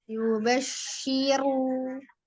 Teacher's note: jangan lupa ditebelin dulu rnya